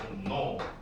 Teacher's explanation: 리을이 앞에서부터 영향을 받아가지고 얘가 니은으로 격화돼 버리는 그런 상황이 됩니다.